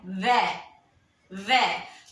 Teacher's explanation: ये जो दांत है वो होठ पे टकराएंगे तभी ये व बोला जाएगा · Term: दंतोष्ठ